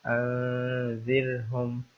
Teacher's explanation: را کے اوپر سکون ہے اور را سے پہلے زیر ہے، تو اس لیے اس را کو باریک پڑھنا ہے، ترقیق کے ساتھ پڑھنا ہے